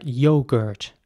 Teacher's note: So once again the O is more like an U sound, yogurt. And in American English it would be more like yogurt. So the O is very round